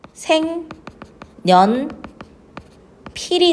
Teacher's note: 비음화가 일어나서 생 년 필이 되는 거지